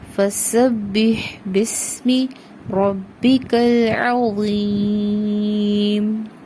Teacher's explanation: سین میں وسل پروڈیوس کرنی ہے، با مشدد کے ساتھ ملانا ہے سین کو